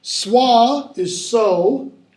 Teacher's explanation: the w drops off the ah becomes o